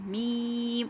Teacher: دونوں ہی ہونٹوں کے سوکھے والے حصے سے ہمارا میم ادا ہو رہا ہے